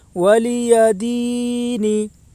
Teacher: یا کے اوپر زبر ہے، زبر کو جلدی پڑھیں، تھوڑا بھی نہ کھینچیں۔ یا ساکن سے پہلے زیر ہے، اس لیے یا مدہ ہوگی، یا مدہ کو ایک الف کے برابر کھینچ کر پڑھیں۔